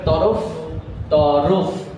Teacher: মাঝখানে যে র সেটার উচ্চারণে ও ধ্বনি এসেছে, এখানে ওকারটা দিতে হয়েছে তরফ।